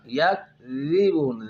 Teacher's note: ذال کا مخرج ہے زبان کی نوک اور اوپر والے دانتوں کا کنارہ